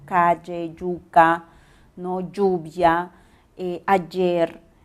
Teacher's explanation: Hay diferencias marcadas entre los costeños, por ejemplo, el gran gusto por articular el sonido Y, y siempre somos yeístas